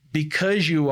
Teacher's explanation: Esse Y, por causa dele, esse Z vai mudar para um J